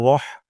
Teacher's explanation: র উচ্চারণ করব রহ বলবো রাহ বলবো না